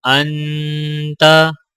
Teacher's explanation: حمزہ نون زبر ان، تا زبر تا، انتا۔ یہاں پر حمزہ کو نون کے ساتھ ملاتے ہوئے نون کے اوپر غنہ کیا جائے گا